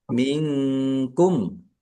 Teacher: nun sukun bertemu dengan huruf kaf bacaan ikfa dibaca samar-samar